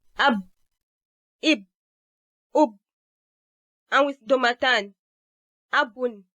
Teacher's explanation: The manner that this contact is made is called a stop, as the airstream is initially completely stopped and later released in a sudden manner. Ba is a voiced sound, and this means that it is produced when these vocal cords come together and they vibrate as the air passes through them in this state. You can feel this vibration physically when you place a fingertip on this part of the throat during the production of any of the voiced sounds. · So Ba is bilabial, a stop, and a voiced sound.